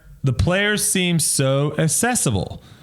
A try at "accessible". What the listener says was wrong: You hit the C a little harder. accessible. Accessible. Accessible.